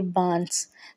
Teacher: تو بانس میں نون تو لکھا گیا ہے لیکن آواز نون گنہ کی آئی ہے